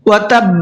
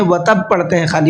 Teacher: یہ پوائنٹ اس لیے بتا رہا ہوں اس لیے کہ اس کے اندر عام طور پر زیادہ تر لوگ غلطی کرتے ہیں، وتب پڑھتے ہیں خالی، وتب، وتب نہیں ہے، با کے اوپر تشدید ہے، ڈبل کر کے پڑھیں گے۔